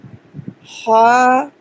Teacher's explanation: آپ آواز بند کر دینا اور صرف ہوا حلق سے باہر سانس جیسے ہم لیتے ہیں نکالتے ہیں تو یہ مخرج ہے، وہاں سے یہ حرف ہا ادا ہوتا ہے.